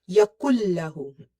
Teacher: We will merge the kaf with the lam, and we will hide this noon entirely. Yakullahu. We will not take this noon sound into the nose. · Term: merging